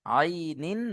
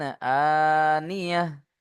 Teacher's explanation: একটা কণ্ঠনালীর মাঝখান থেকে উচ্চারণ হয় আইন, আর হামজা কণ্ঠনালীর শুরু হতে উচ্চারণ হয়, অর্থাৎ নিচের দিক থেকে।